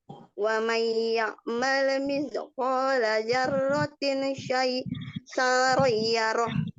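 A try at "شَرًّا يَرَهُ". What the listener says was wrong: Nah, syarronnya ro-nya tasdid syarran. Syarran yarah. Syarran, ulangi, syarran yarah. Syarra, syarran.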